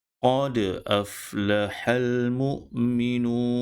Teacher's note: Dal perlu dibunyikan dengan sebutan qalqalah kerana dal salah satu daripada huruf qalqalah.